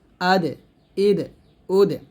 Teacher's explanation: দাল কিন্তু কলকলা হবে